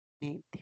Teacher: Es un sonido velar, ¿no? Se llaman consonantes velares.